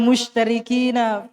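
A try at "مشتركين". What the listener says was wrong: Ada taknya, ya. Ada taknya, jangan lupa.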